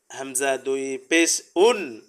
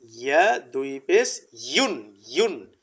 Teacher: কিভাবে উচ্চারণটা হবে দেখেন, হামজা দুই পেশ উন আর ইয়া দুই পেশ ইউন, ইউন, ইয়া দুই পেশ ইউন, ইউন হবে, উন হবে না। উন উন বললে ইয়া হামজা হয়ে গেল